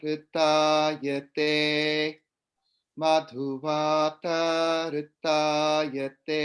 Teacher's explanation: notice how there's actually a small gap after vata